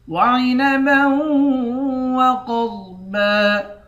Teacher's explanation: با کو واو کے ساتھ ملا کر واو پر غنہ کریں گے، قاف اور ضاد دونوں کو موٹا پڑھیں گے، آخر میں دو زبر ہے، دو زبر کی تنوین میں وقف کرتے وقت ایک زبر پڑھتے ہیں۔